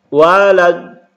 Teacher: mat lazimnya di sini ketemu dengan huruf yang bertasydid panjangnya 6 harokat.